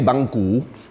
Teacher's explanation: say banku spelled like this ba and gku we say banku with a rising tone to fit the phonetics